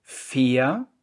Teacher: Fair, das ist kein Diphthong, nicht fair